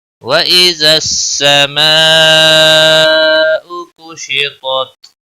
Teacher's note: مد متصل ہے، 5 الف کے برابر کھینچ کر پڑھیں گے۔ کشطت تا حروف مستعلیہ میں سے پر پڑھا جائے گا، وقف کی صورت میں تا ساکن پڑھا جائے گا۔